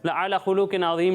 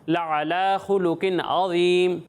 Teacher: بات کا خیال رکھیں کہ یہاں کھڑا زبر ہے ٹھیک ہے کھڑا زبر کو ہم ایک الف کے برابر کھینچ کر پڑھتے ہیں